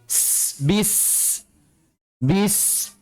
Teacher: Baik. Jadi sin juga memiliki sifat huruf hams, udaranya mengalir, nggak boleh tertahan